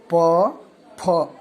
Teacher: आपके दोनों ओठ, ऊपर वाले और नीचे वाला, दोनों ओठ आपस में सटते हैं, तब जाके इन शब्दों का उच्चारण हम करते हैं। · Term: ओष्ठ